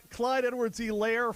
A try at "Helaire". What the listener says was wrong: You said Helaire. Emphasis on the E, not the layer. Helaire. Said Clyde Edwards-Helaire. It's Clyde Edwards-Helaire.